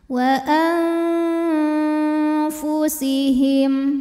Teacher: Maka nun sukun dibunyikan samar-samar, siap-siap mau ke makhraj huruf fa disertai bunyi dengung. Nah, karena fa ini makhrajnya tidak terlalu dekat juga tidak terlalu jauh dari nun, maka bunyi samar dan dengungannya sama. · Nah, karena fa ini makhrajnya tidak terlalu dekat juga tidak terlalu jauh dari nun, maka bunyi samar dan dengungannya sama. Jadi suara yang masuk hidung juga aliran suara yang keluar dari mulut itu seimbang. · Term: ikhfa ausat, ikhfa awsat